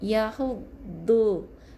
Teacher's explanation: Jadi ni salah Jadi yang betul kena masuk dalam huruf da yang bersabdu, bukan huruf dal Bunyi macam dal tapi sebenarnya da ni di sisi lidah dikeluarkan di bahagian tepi lidah kita